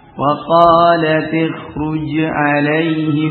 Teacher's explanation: ini tafkhimnya kuat min ajli ra al-mufakhamah, nah, karena adanya ra yang mufakhamah. Ini pengecualian pada ra, ya, pada kha yang disukun, sebelumnya kasrah dan sesudahnya adalah ra yang mufakham.